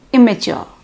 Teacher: two identical consonants is reduced to a single occurrence like immature the double m in the spelling is pronounced as a single m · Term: degeneration